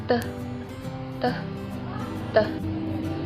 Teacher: Konsonan apico-alveolar hambat tak bersuara teh, teh, teh.